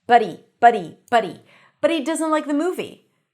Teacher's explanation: a D between two vowels and a T between two vowels sound the same in American English. Buddy.